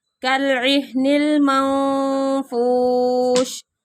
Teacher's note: नून साकिन के बाद फा आ गया, इख्फा हो रहा है